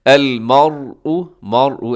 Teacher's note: مرء میں را موٹا پڑھا جائے گا کیونکہ را ساکن ہے۔ جب را ساکن ہو، را کے اوپر جزم ہو تو اس سے پہلے والا حرف دیکھتے ہیں، اگر اس سے پہلے والے حرف کی اوپر حرکت ہو تو را موٹی ہے۔ · ایسے را منہ بھر کے آپ پڑھیے گا